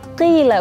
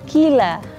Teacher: Jadi dia nggak ada hembusan nafas. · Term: qaf